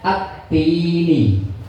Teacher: berarti itu syamsiah L-nya hilang